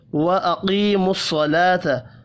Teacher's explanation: قاف اور صاد پر پڑھے جائیں گے، یا مدہ اور کھڑی زبر 1 1 الف کے برابر کھینچ کر پڑھنی ہے۔ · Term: حروف مستعلیہ